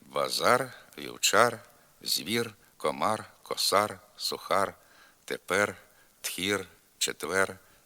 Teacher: р у кінці слова і складу в українській літературній мові вимовляється твердо